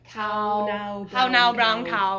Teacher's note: And so this, you want to 90-10, and you want to focus more on the ah, the ow, than the wah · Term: diphthong